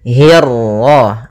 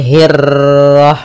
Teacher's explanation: untuk huruf ra ketika dia berharakat tasydid itu atau dia berharakat sukun, dia ra-nya 1 kali takrirnya. Tidak boleh banyak-banyak, tidak boleh hirrah. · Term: ra tafkhim